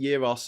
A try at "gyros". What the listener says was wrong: No, you don't pronounce the G.